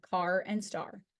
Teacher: and surf a made by the open mid backr unrounded vowel the tongue is low and back in the mouth with the mouth relatively open followed by the r sound the a r makes the r sound like at the end